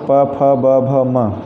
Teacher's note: इनका उच्चारण बिना दोनों ओठों की सहायता के नहीं हो सकता। इसलिए इनके उच्चारण के लिए दोनों ओठों की ज़रूरत पड़ती है। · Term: ओष्ठ